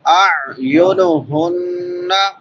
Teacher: ہا بڑی ہا ہے، اقصی حلق سے، حلق کے آخری حصے سے ، اور آخر پہ نون مشدد ہے، غنہ ہوگا، ولا